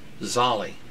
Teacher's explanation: You say that Latin-wise, pronouncing the terminal vowel